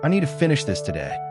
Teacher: The stress is on need, finish, and today. The small words are softer. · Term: stress keywords